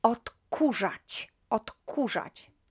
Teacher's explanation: the K is unvoiced. That's why it also kind of matches the next consonant and becomes unvoiced as well.